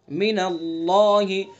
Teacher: اللہ کے لام کو پر پڑھیں گے چونکہ اللہ کے لام سے پہلے زبر ہے